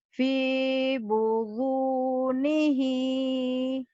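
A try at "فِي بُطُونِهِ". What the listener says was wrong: Boto bukan bodo. Boto. Boto tak. fi butu. Fi butunihi.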